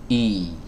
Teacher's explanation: yang dikeluarkan dari tenggorokan bagian bawah ya dari pita suara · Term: huruf hamzah